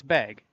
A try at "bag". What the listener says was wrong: It sounds like you're saying beg. Bag. Like fa, but bag. Like fa. Ba. fat.